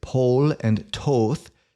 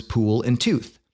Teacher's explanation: the Great Vowel Shift kicks in raising o to U